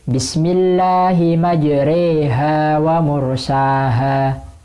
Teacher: membaca huruf antara alif dan iya namun lebih dekat kepada iya, yang biasanya dibaca majroha. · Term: bacaan imalah